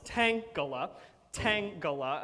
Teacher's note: It's got 3 syllables. It's a stressed followed by 2 unstressed. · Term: dactyl